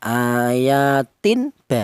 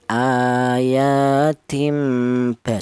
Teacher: Ini cara bacanya tanwin ini diganti dengan huruf mim. Ini diberi tanda huruf mim kecil. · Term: iqlab